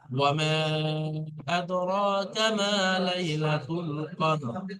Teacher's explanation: আর মধ্যে মুনফাসিলের কায়দা আপনারা পড়েছিলেন যে হরফে মদের পরে যদি হামজা দ্বিতীয় শব্দে আসে, তো এখানে হামজা দ্বিতীয় শব্দে আসছে। 3 থেকে 4 টান দিয়ে পড়তে হবে মধ্যে মুনফাসিলকে